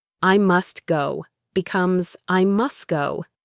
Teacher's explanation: I must go becomes I must go. The T disappears.